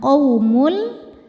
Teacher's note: Qaumul, lalu ada hukum idgham bila gunnah karena ada tanwin dhammah menghadapi huruf lam, maka tanwinnya ini dileburkan ke lam, qaumul, tapi tidak perlu ditahan, jadi masuk tanpa dengung.